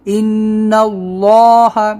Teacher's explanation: یہاں پر غنہ کریں گے کیونکہ یہاں پر نون کے اوپر تشدید ہے، ان اللہ، دیکھیے موٹا ہو رہا ہے یہاں پر۔